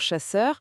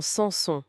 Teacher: Il faut bien distinguer le che où l'air sort un peu comme pour chasseur et le se plus net quoi, comme dans sans son.